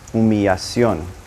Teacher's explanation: It actually gained an L. Now, two L's in Spanish are going to sound like a Y